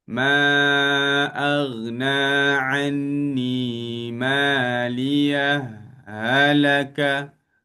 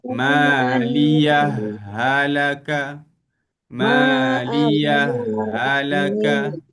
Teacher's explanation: Dan kalau kita saktah, kita kena izharkan bunyi huruf ha tersebut. Kalau idgham, kita tak jelas ha yang pertama ni, kita terus masuk yang kedua.